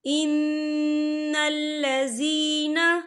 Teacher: ان الذین، یا دیکھیں ان یہاں نون مشدد ہے تو یہاں پر غنہ ہوگا، اور لذین یہاں پر یا مدہ ہو رہا ہے، یا ساکن ہے، یا ساکن سے پہلے زیر ہے تو ہم اسے 2 یا 3 حرکت کے برابر کھینچ کے پڑھیں گے۔